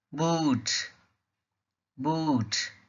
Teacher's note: in the word boot the boot sound is a long sound ooh